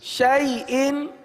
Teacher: حمزہ ساکنوں کو جھٹکے کے ساتھ ادا کریں گے